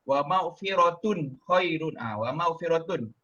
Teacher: Dia kena sebut tun tu tanpa ada dengung, tanpa ada ikhfa. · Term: izhar halqi